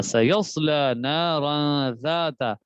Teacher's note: دو سیٹی والے حروف آگے اکٹھے، لیکن ایک کو باریک پڑھنا ہے اور ایک کو موٹا پڑھنا ہے